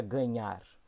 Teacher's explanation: está fazendo com que a segunda sílaba seja pronunciada de maneira mais forte. Essa é a sílaba tônica.